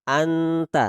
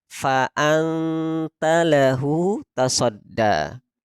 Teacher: Digabungkan dua huruf tersebut, nun dan ta, sehingga tidak kita baca ng tapi nt, anta. Jadi dibuat sesamar mungkin antara n dan huruf t. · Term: ikhfa a'la